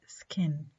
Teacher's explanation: يعني we try to make a strong puff of air when it occurs initially or in a stressed syllable. طيب, ك is unaspirated after س and in unaccented syllables